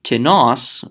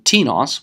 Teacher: the accent goes at the end on the last syllable rather than T nos which was asking in question Tenace means